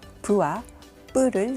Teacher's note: 뿌를 발음할 때 부를 발음할 때보다 입술에 힘이 더 많이 들어가고 소리가 더 높게 납니다. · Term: 된소리